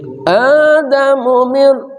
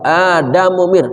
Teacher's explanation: Adamu mir A-nya panjang, mu-nya pendek.